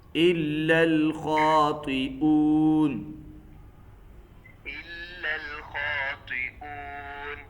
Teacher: خاطئون، حمزہ کو واضح کرو، حمزہ کی تحقیق خوب واضح ہونی چاہیے